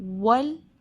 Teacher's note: واو lips کی گولائی سے ادا ہوگا، ہونٹ گول کر کے، جیسے انگلش کا واو ہوتا ہے اسی طرح اردو یا تجوید کا جو واو ہے، عربک لیٹر واو، اس کو ہم وا نہیں پڑھ سکتے، لپس پھیلا کر نہیں، گول کر کے راؤنڈ ہوں گے.